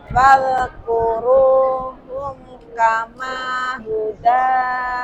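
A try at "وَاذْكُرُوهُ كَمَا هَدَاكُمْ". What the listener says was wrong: Bukan hum, wadhkuruhu Hada Hada Hadakum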